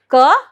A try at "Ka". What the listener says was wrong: No, not K. Ka.